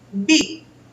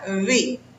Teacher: la V, que se supone que la deberíamos de pronunciar igual en español, que no lo hacemos, no se juntan sus labios al pronunciarla. · Y esa B tiene que ser con los labios pegados cuando yo la pronuncio.